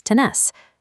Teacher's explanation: The conjugation shifts the stress to the final syllable. By dropping the R and adding an S, tener becomes tenés.